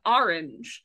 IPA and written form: 'ɑɹˌɪndʒ (orange)